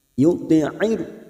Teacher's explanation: May yuti'ir, yuti'ir, huruf ain memiliki sifat tawasud, jadi jangan samakan dengan hamzah. Yuti'ir wastul halqi, yaitu bagian tengah tenggorokan.